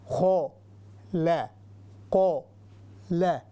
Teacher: آپ نے دیکھا ہوگا میرے جو ہے زبان کبھی اوپر جا رہی ہے، آواز موٹی ہو رہی ہے، کبھی باریک